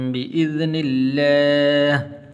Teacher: لفظ اللہ کو پر نہیں کرنا بلکہ باریک کر کے پڑھنا ہے